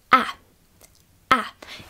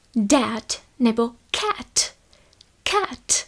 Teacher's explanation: Tady toto a-e vyslovuju tak, že si pusu nachystám na e a otevřu ji ale pořádně i do vrchu. To znamená jakoby na e, ale řeknu do toho a. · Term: otevřené a-e